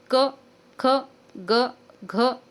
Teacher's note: क ख ग घ असं पटकन वाचन करायचं. त्याच्यामध्ये अचं साऊंड नाही येणार. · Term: हलंत